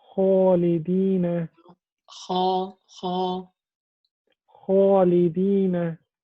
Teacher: Don't round your lips. Don't say kho, khalidina.